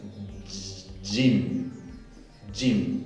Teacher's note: Y utilizo las cuerdas vocales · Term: sonora